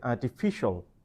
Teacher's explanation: Now when you pronounce, you have to stress the third syllable and you have to say artificial